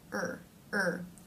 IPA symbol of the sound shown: ɝː